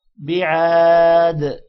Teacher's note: عین کے ساتھ الف ہے، تھوڑا سا لمبا کریں گے اور دال پر قلقلہ ہوگا